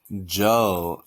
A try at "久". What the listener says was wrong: 久 A little bit like the English, like a Joe, but we need to make it like low tone.